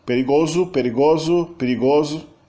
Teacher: Então a gente tem perigoso, o U final, aliás, o O final, é sempre pronunciado como U